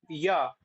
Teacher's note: इचु यश नाम तालु तो वहां पे आप बोलो य तो जब आप बोलोगे य तब आपकी जो जिक्वा है वो तालु को पूर्ण रूप से स्पर्श नहीं कर रही वो कैसे कर रही है जीभ जा रही है और वापस